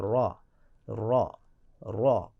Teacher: تکریر یعنی کہ را کو ادا کرتے وقت شروع میں ایک را آپ کو خاموش را، سائلنٹ را آپ کو محسوس ہوگا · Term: صفت تکریر